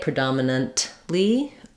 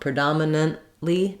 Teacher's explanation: speech is by making this second n Sound short so predominantly I go up and stop the air for the te but it never releases in a burst of air · we use an unreleased T in this word typically